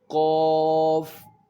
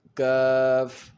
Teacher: قاف جو پر پڑھا جاتا ہے اور کاف باریک پڑھا جاتا ہے